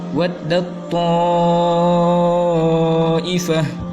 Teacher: idgham masukkan ke huruf yang terletak sesudahnya seakan-akan huruf ta itu tidak ada